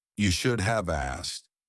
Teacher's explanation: Notice we often drop the K, right, as well in asked, right? We often drop the K.